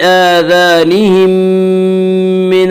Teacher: اگر میم ساکن کے بعد دوسری میم آئے تو وہاں پہ ادغام ہوگا، اس ادغام کو ادغام شفوی کہتے ہیں